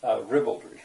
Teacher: It's the first syllable that's stressed.